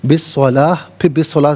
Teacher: بالصلاۃ اگر یہاں رکنا تھا تو بالصلاح پڑھیں گے کیونکہ گولتا وقف میں دو چشمی یہاں سے چینج ہو جاتی ہے